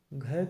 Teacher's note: घ का उच्चारण कंठ की सहायता से होता है,